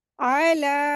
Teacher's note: आइन को हलक से अदा करेंगे। लाम को दो हरकत खींचेंगे।